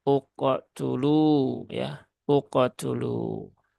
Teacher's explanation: Pantulan pantulan kofnya ya, pantulan kofnya jangan uke ya, tapi uko ya, uko dulu ya, bukan uko, bukan uke, tapi uko dulu ya, tidak ada tambahan hamzah di belakang kof.